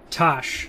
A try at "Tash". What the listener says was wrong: Pronounce Tash, just so you know. You said Tosh, like Tosh.0. Tash, yeah.